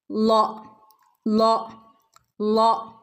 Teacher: നാവിന്റെ അറ്റവും മേലെ മുൻപല്ലുകളുടെ അറ്റത്താ തട്ടുന്നത് · മേലെ മുൻപല്ലുകളുടെ അറ്റത്തിൽ തട്ടുമ്പോൾ ലോ ലോ എന്നുള്ള ശബ്ദം ഉണ്ടാവുന്നു.